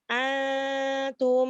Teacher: Nun sama ta itu kan makhrajnya dekat ya, hampir dekat ya. Sama-sama memakai ujung lidah ya. Kalau ke pangkal lidah, ke apa namanya tenggorokan itu jauh. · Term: ikhfa